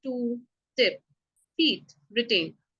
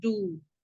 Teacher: So there's no vibration while we are producing the pa sound or ta sound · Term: voiceless